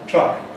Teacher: truck is backer, more like o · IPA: [trʌk]